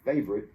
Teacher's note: a lot of people reduce favorite to just two syllables